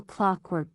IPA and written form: ˈklɒkwɜːrk (Clockwork)